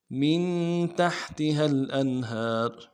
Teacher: من میں نون ساکن ہے، غنہ کریں گے، تا کو ہا کے ساتھ ملانا ہے ، اور آگے تا کو نرمی سے پڑھنا ہے، ایک زیر